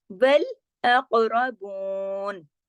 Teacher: काफ को मोटा करके हिला देना है, कलकला करना है।